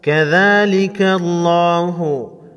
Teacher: لفظ اللہ کے لام کو موٹا پڑھیں گے۔ ذال کے اوپر کڑا زبر ہے، کڑا زبر کو ایک الف کے مقدار کھینچ کر پڑھیں گے۔